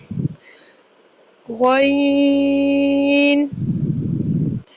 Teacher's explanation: غین کا مخرج، غین حلق کے اوپر والے حصے سے ادا کیا جاتا ہے۔ اس کی مقدار 2 سے 2.5 الف یعنی 4 سے 5 سیکنڈز کے لیے ہم نے اس کو لمبا کرنا ہے۔